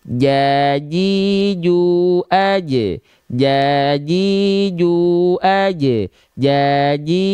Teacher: Tengah lidahnya kita sentuhkan ke langit-langit di atasnya. Jadi diangkat tengah lidahnya ini area yang berwarna ungu, diangkat dan disentuhkan betul-betul ke langit-langit ya. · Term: wastul lisan